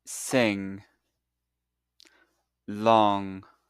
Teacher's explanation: Now first open your mouth a little. Notice your tongue is actually touching the back part of the roof of your mouth.